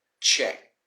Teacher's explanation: So once again, the ed sounds very different. The e slightly disappears and the d turns into like a t sound.